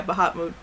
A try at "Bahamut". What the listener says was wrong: There's no extra T in there. Like the Bahamas, but instead of Ma, you make Moot or Mutt or whatever. There's no extra T in there.